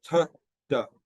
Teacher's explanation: All the sounds are exactly the same except for the voicing.